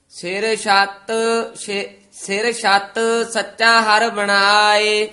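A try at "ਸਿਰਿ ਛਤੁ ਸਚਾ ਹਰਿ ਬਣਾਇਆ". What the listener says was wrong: ਹਾਂਜੀ, ਸਿਰ ਛੱਤ ਸੱਚਾ ਹਰ ਬਣਾਏ। ਛੱਤ ਪਦ ਜਿਹੜਾ ਨਾ ਥੋੜਾ ਜਿਹਾ ਕਸ ਕੇ ਉਚਾਰਨ ਕਰਨਾ, ਦਰਮਿਆਨਾ ਜਾ ਬੋਲਣਾ।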